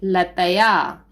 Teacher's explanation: विसर्ग लगा है और विसर्ग की ध्वनि हा होती है